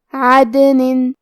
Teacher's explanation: کلمت عدن میں یہاں دال پہ جزم ہے کیونکہ دال بھی حروف القلقلہ میں سے ہے تو ہم یہ حرف کو ہلاتے ہوئے یہ کلمہ کو پڑھیں گے